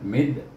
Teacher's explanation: Kemudian mim baris di bawah bertemu dengan huruf syamsiah, huruf dal, maka kita baca dengan idgham syamsi mid, iaitu mim diidghamkan dengan huruf dal, mid. Kemudian dal baris di bawah di bertemu dengan ya.